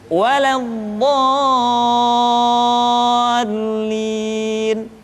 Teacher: Bo dibaca panjang, suaranya tidak diayunkan karena setelah tanda panjang diikuti oleh huruf yang bertasydid.